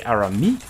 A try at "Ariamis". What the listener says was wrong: No, it's Ariamis. There's an extra syllable in there. If you Arami, you're missing a syllable. In the middle.